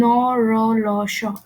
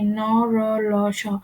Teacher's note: তারপরে দেখেন ন র ল স এটা হচ্ছে দন্ত মূলীয় ধ্বনি ন র ল স দাতের অগ্রভাগে দেখেন আপনার জিবাটা লাগছে